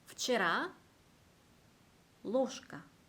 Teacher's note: 유성음이 무성음 앞에 있을 때 무성음화 됩니다.